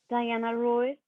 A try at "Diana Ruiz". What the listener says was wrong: Okay, Diana Ruiz, that's flat. So Diana Ruiz. Okay, so you're going to go up and come down.